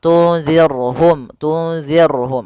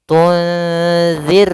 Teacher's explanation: ra yang sukun didahului dengan kasrah, maka ini kita namakan dengan ra tarqiq, ra yang tipis dalam pelafalannya, jangan dibaca tunzir.